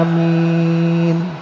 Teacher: Jadi A dua harokat, minnya panjang ya.